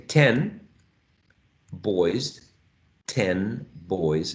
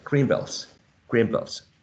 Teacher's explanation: N, which is an alveolar sound, becomes more like m, which is bilabial. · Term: regressive assimilation